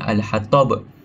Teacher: Hatab ada huruf ba di hujung sekali. So kita patut pantulkan dengan jelas saat berhenti. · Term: qalqalah kubra